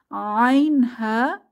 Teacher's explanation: আইন হা এই দুটি হরফ কণ্ঠনালীর মধ্যভাগ থেকে